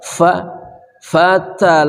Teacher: ini sifatnya adalah hams berdesis FA ya Ada udara yang keluar